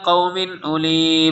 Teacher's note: تنوین کے بعد حمزہ آ رہا اظہار ہوگا